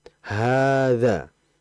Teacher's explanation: Di situ ada ha di situ dibaca panjang, hadza. Ha-nya dibaca panjang. Kalau kita melihat di mushaf memang itu makanya fathah berdiri ya. Artinya dibaca 2 harokat. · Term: mat asli